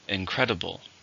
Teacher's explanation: How many syllables in an incredible? 4. Stress on the second.